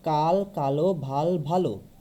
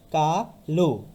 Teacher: বাংলা ভাষায় ব্যবহৃত কিছু বিশেষণে পদের অন্তিমের অধ্বনি ও এর মতো উচ্চারিত হয় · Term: সংবিত ও